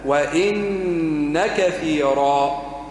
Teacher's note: وإن كثيرا غنة فقط ما فيش مد